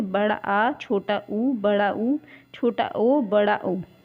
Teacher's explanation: पश्चित भाग से बड़ा आ, छोटा ऊ, बड़ा ऊ, छोटा ओ, बड़ा ओ, ये जीभ के पश्चित भाग से बोले जाते हैं